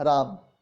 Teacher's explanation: उच्चारण में अंत्य आकार का लोप होने लगा